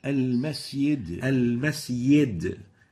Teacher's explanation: The fourth mistake is replacing the jim with the ya. This is common in some Gulf states where they say instead of the jim they replace it with the ya, and it sounds like this.